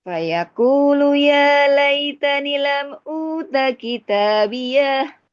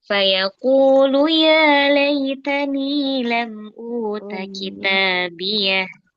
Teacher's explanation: Nah, hati-hati sudah betul nadanya, tapi panjang pendeknya. Ni-nya panjangkan.